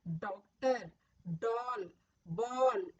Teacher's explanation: होठ को गोल घुमाकर अंदर से बोला जाता है।